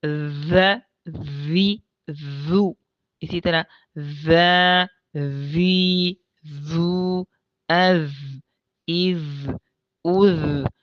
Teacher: اور جو ذال ہے اس کی آواز باریک ہے اور جہر کی وجہ سے بلند بھی ہے۔ سانس نہیں ہوگی اس کے اندر، سارا سانس جو ہے وہ آواز بن جائے گا۔